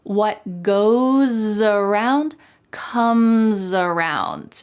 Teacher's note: Here we have two instances where the S at the end of goes is followed by a vowel. So that S is going to sound like a Z in American English.